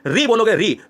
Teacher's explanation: री बोलोगे, री, तो ये री दोस्तों, आप जब टा बोलते हो, टा वाला वर्ग मूर्धा में आता है व्यंजन में, ऐसे ही जब री बोलते हो तो री बिल्कुल टा की जगह जैसे है। आगे जीभ का जो आगे वाला हिस्सा है वो मूर्धा से यहां पर कहीं ना कहीं टच होता है।